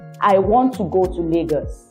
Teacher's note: I am speaking flat. From the start, my pitch is never high, is never low. My tones are flat. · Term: flat tone